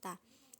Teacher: ujung lidah disentuhkan dengan gusi-gusi seri atas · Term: huruf ta